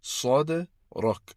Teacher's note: sad is again pronounced with a round shaped mouth, and dal has a kalkala after that, which makes it sad rak.